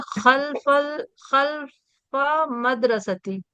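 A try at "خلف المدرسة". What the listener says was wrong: خلف المدرسۃ، الف لام میں ملائیں گے، لام میں ملائیں گے جی۔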